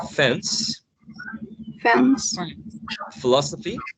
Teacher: easy for an english-speaking person these label dental consonant sounds are articulated by touching the bottom lip and the upper teeth